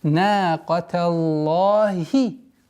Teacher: И надо обращать внимание, чтобы огласовка касра в последней букве слова Аллах произносилась четко, ясно и до конца